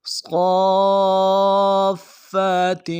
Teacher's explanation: صاد کی سیٹی موٹی ہوگی، صاد کے اوپر مد ہے، مد عارض الف دال میں کھینچیں گے، اور صاد کو فا کے ساتھ ملانا ہے، فا کے اوپر تشدید زور دیں گے.